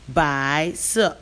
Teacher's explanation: Bai is the second tone, si is the fourth tone.